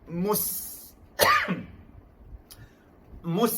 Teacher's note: kalau senyum, kita press angin daripada dalam mulut keluar untuk menzahirkan sifat sofir, bukan rokhawah.